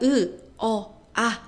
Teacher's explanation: 이렇게 발음을 해 보면 혀의 높이가 계속 달라지는 걸 알 수가 있어요. 그래서이 혀의 높이에 따라서도 높으면 고모음, 중간이면 중모음, 낮으면 저모음이라고 부릅니다.